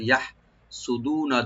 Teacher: আম ইয়াহসুদুনান নাসা, ইয়াটাকে আমরা open করে হাটাকে একটু হামস করব, ইয়াহ সুদুনা, দু একালিপ টানবেন, নুনে কোনো টান নাই